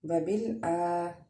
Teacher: حمزہ کے اوپر کھڑا زبر ہے، اس لیے اس کو ایک الف کے برابر ہم کھینچ کے پڑھیں گے